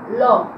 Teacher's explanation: জিহ্বা যখন উপর দিকে ওঠে তখন জিহ্বার দুই পাশ দিয়ে কি হবে, বাতাস বের হয়ে যায় বলে একে বলা হচ্ছে পার্শ্বিক ধ্বনি